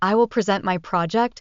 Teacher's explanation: the stress moves to the second syllable